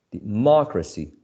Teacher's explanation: The stressed syllable is the antepenultimate. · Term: antepenultimate syllable